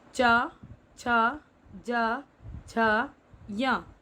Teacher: स्पर्श व्यंजन है दोस्तों च वर्ग और इनका उच्चारण स्थान है तालु।